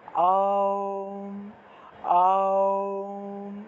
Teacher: ওম উচ্চারণের নিয়মটা হলো গিয়ে মুখটা একদম বড় থেকে ছোট হবে, সেজন্য আ দিয়ে আরম্ভ করবেন। আ অ উ ম, অর্থাৎ আওম আওম, এইভাবে একটু টান দিয়ে একটু সময় নিয়ে বলতে হবে। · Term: ঔম উচ্চারণের